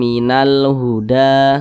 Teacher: didengungkan suaranya itu kita panjangkan kita tahan sejenak